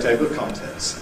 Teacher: I think what I usually do in table of contents is I desyllabify the L.